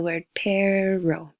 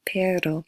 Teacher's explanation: has a little flap on the top of your roof of your mouth